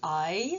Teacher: c'est 2 sons voyelles, mais très très liés, collés presque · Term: diphtongue